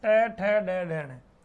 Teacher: मूर्धा का मतलब होता है कि आपकी जीभ तालवे के टकराकर बहुत जोरदार या तेज वापस वो गोल होके वो आपकी जीभ वापस नीचे आएगी। तालवे के टकराकर वापस जैसे मान लो पलटी मारे वो उस रूप में आपकी जीभ वापस आएगी।